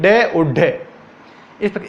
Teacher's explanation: जब अपन ड ढ की उत्पत्ति बोलते हैं जबान अपने मुंह के अंतर्गत, तब अपनी जबान एकदम से फेंकती उन शब्दों को, जैसे कोई अपन गेंद को ठप्पा लेके गेंद को नीचे ठप्पा देते हैं, उसी प्रकार से अपनी जबान भी इन ड ढ व्यंजनों का उच्चारण करने पर अपनी जबान भी गेंद की तरह ठप्पा लेती है, ड और ढ। जैसे अपन बोल जमीन पर के ऊपर फेंकते हैं, उसी प्रकार से इन वर्णों का उच्चारण करते समय पर अपनी जबान भी ठप्पा लेती है, इसलिए उनको उत्क्षिप्त या ताड़नजात कहते हैं।